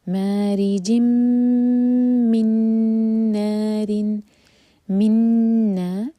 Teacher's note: یہ بھی ہے ادغام غنہ کے ساتھ، ایمٹی نون کے بعد نون آ رہا ہے